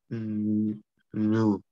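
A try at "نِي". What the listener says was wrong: Kessra, nicht Dhamma.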